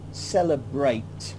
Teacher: But here we've got two E's coming together, cell, e and e. The first E, cell, and then the second E is a schwa. It's the sound It doesn't sound very romantic or very clear, but it's just the sound that we pronounce, celebrate.